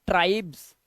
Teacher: आपको एस नहीं सुनाई देगा आपको ज का सुनाई देगा ज जैसे ये है जा प्योर जा लेकिन जा के नीचे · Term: ज का साउंड